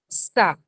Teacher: స అని పలికినప్పుడు ఏమవుతుందంటే నాలికను ఎదర పళ్ళ మధ్యలోకి తీసుకొస్తున్నాం.